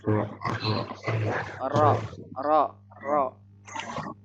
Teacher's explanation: Nih, ini bukan punggung ya. Ujung lidah agak ke dalam mengenai gusi gigi seri atas.